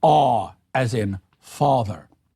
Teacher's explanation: the ah sound of father became aw